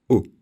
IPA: ʊ